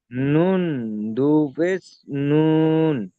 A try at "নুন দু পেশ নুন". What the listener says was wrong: নুন টান দিচ্ছেন কেন? নুন দু পেশ নুন।